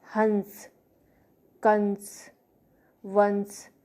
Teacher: अनुस्वार, स्वर के ऊपर लगे बिंदु को अनुस्वार कहते हैं। अनुस्वार सहित स्वर का उच्चारण मुख और नाक दोनों मार्गों से हवा निकालकर होता है।